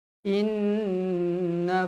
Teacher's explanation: Inna wajibul gunna wajib dengung dua harakat Jangan kurang siapa baca kurang dari dua harakat jentik telinga sendiri